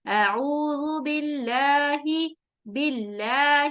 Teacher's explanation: بہت ساری لوگ یہاں بھی اکثریت ہم میں سے مسٹیک کرتے ہیں، اعوذ باللہ، باللہ اس طرح سے پڑھتے ہیں، حالانکہ یہاں پر ہمیں اللہ کے لام کو باریک پڑھنا ہے، کیونکہ اس کے پہلے اگر دیکھیں تو کسرہ آ رہی ہے